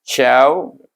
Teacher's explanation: waw itu bertindak sebagai huruf lin, syaw baca 1 harakah saja.